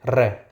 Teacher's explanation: जिन व्यंजन का उच्चारण करते समय वायु जीवा के ऊपर से लुढ़कती हुई बाहर निकलती है उसे लुंठित व्यंजन कहा जाता है। इस वर्ण का उच्चारण करते समय जीवा में कंपन भी होता है। इसे प्रकंपित व्यंजन भी कहा जाता है।